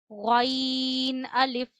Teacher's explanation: गन को हमेशा मोटा पढ़ा जाता है और गले के पहले हिस्से से पढ़ा जाता है